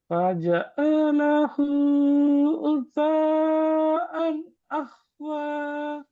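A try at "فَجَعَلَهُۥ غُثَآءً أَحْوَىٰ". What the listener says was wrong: அதான் அதெல்லாம் high pitch தானே போகுது குறைய மாட்டேங்குது فجعله غثاء أحوى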